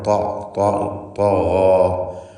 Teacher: താ ഇസ്തിഅലാഇൻ്റെ അക്ഷരമാണ്. ഇത്ബാഖിൻ്റെ അക്ഷരമാണ്. കടുപ്പത്തിൽ ഉച്ചരിക്കേണ്ട അക്ഷരമാണ്.